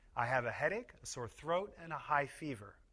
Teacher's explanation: We use falling intonation on the last item to show that the list is complete.